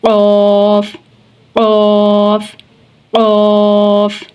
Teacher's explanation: कफ पुर पढ़ा जाएगा जुबान की जड़ और तालू के नरम हिस्से से